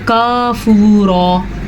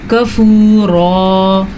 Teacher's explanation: اچھا، عام طور پہ یہاں پہ کیا غلطی کی جاتی ہے، اس کو پڑھا جاتا ہے کافورا، تو یہ غلط ہے۔ کاف زبر کا، اس کی مقدار لمبی نہیں ہونی چاہیے، صرف زبر جتنی ہی ہونی چاہیے۔